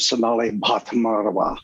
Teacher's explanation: that aspirated b at the beginning of her name that's a difficult sound for americans